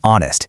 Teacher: It is not honest. That H is completely silent. You just start right on the O, making it honest. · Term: silent H